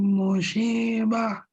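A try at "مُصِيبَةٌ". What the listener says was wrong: Musibah pakai shad, Pak. Patokannya S, musibah.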